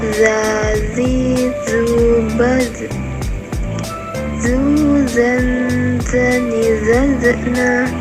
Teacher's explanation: Selanjutnya, huruf Za. Dikeluarkan dengan ujung lidah hampir di atas dua gigi seri bagian bawah, diucapkan dengan mengalir suara tanpa diiringi dengan udara.